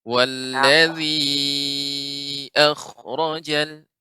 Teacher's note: Kha ketika dia disukunkan, ini termasuk huruf isti'la sehingga harus ada juga isti'la'nya, sifat isti'la'nya tebal